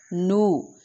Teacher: واو مدہ واو کے لیے اور پیش کے لیے ہونٹوں کو مکمل گول کریں گے تاکہ آواز ناک میں نہ جائے. ایک الف کے برابر لمبا کریں گے.